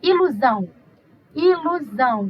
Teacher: U aí virou semivogal Observe que temos ilusão Ilusão tá vendo na hora de eu falar deu pronunciar eu transformei esse ozinho aí em uma semi vogal